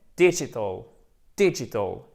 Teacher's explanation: accent tonique en première position, avec un I court